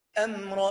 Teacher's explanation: الميم الساكنه خلي بالك فيها غنه